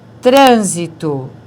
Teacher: é proparoxítona não é a última não é a penúltima é a antepenúltima sílaba que é a forte